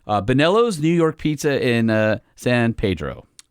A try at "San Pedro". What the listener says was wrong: It's Pedro. The locals. Do the locals say Pedro? You don't even say San. You go, Pedro, what's up?